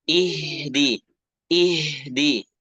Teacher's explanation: kasrah kemudian jangan E tapi I ih huruf ha alirkan naas kita alirkan nafas ketika mengucapkan huruf H